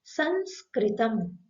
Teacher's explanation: शब्द के बीच में आने वाली अनुस्वार का उच्चारण मुख से भी और नासिका दोनों से किया जाता है